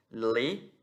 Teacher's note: Então, o lamed, ele tem som de L. O lamed, com o shevá, ele vai ter um som reduzido na garganta